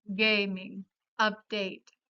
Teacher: la A adopta el sonido vocálico de la E en español